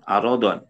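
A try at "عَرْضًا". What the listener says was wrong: ardon ardon rnya sukun aron karena kalau arad nanti beda maknanya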